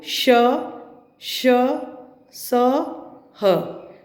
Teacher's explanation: ऊष्म व्यंजन जब हम इनका उच्चारण करते हैं तो वायु मुख से टकराकर गर्मी पैदा करती है। ऊष्म का अर्थ ही गर्मी होता है।